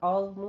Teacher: आज़मु में आइन वस्ते हलक से। ज़ौ को आपने पुर पढ़ना है बगैर सीटी की आवाज़ से, नरमी के साथ, और पुर आवाज़ आपकी होनी चाहिए।